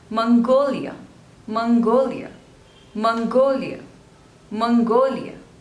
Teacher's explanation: There are total 3 syllables and the stress is on the second one.